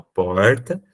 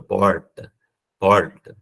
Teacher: É o R recuado para trás, que eu faço assim, ó, porta, ou R com ponta da língua